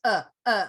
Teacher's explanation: like you just have air coming out through your vocal cords it's a neutral sound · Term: schwa